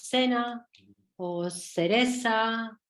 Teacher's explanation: en lugar de utilizar el sonido interdental fricativo sonoro, o sea, representado por la grafía Z o C, pues utilizaríamos la S.